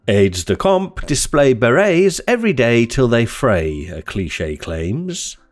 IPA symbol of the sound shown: eɪ